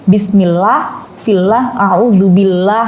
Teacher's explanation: kalau sebelum Allah itu ada harokat kasroh, maka membacanya itu tipis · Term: tarkik